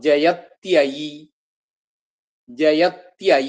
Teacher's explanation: ഇ ആ കൂടിവരുമ്പോൾ അവിടെ യകാരായിട്ട് ത്യ എന്നാവും